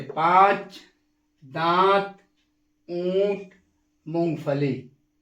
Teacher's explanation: एक बार और, अनुनासिक या चंद्रबिंदु यह कोई वर्ण नहीं है बल्कि स्वरों का एक विशेष गुण है। वह एक नासिक के ध्वनि है, यानी इसके उच्चारण नाक से किया जाता है। ये ध्वनि जिसे वर्ण के ऊपर लगाया जाता है।